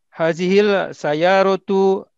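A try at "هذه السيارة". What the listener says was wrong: Hazihis sayyaratu ini huruf samsiah ya. Jadi haji sayyaratu bukan hazihil ya. Hazihis sayyaratu lil mudiri.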